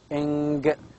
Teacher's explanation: The back of the tongue is with contact with the velium. It is lowered down here, and you can see also here larynx. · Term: nasal sound